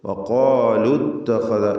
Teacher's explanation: ഇത്തഖദ ചേർത്തോതുമ്പോൾ വഖാലു ഇത്തഖദ ഇൽതിഖാഉ സാക്കിനിൻ പരിഹരിക്കുവാൻ വേണ്ടി ദീർഘാക്ഷരമായ വാവിനെ കളയണം.